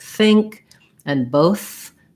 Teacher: i have the voiceless th sound my vocal folds aren't vibrating